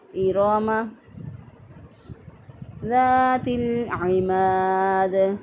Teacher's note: اور بعض لوگ میم کی حرکت کو لمبا کر دیتے ہیں، اس کو پڑھ دیتے ہیں ایراما غلط ہو جائے گا، درست ادائیگی ہے ایراما ذات العماد۔ زال زبر الف زا نرمی سے پڑھنا ہے، اس کو ایک الف کے برابر لمبا کرنا ہے